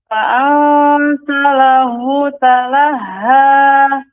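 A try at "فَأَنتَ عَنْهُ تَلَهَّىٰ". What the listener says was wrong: Anhu, ain bukan lahu. Anhu. Fa'anta anhu talaha. Anhu. Iya, tidak boleh anhu, bukan anhu, tapi anhu. Fa'anta anhu, bukan anhu Ibu. Bukan ane, tapi anhu.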